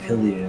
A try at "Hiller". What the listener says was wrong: Letting me know I was pronouncing the letters that were there for another driver's name. Now you're inventing ones that don't exist in Hiller.